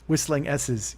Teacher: I got a lot of whistling S's here at the end. That lisp is coming through.